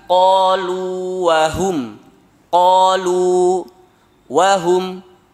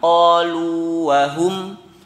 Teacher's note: Yang pertama sukun, waw yang keduanya berharokat tapi tidak diidghamkan. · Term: mad tabi'i